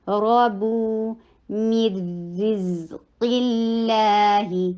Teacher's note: لفظ جلالہ لائٹ ہوگا کیونکہ اس سے پہلے قاف کے نیچے کسرہ ہے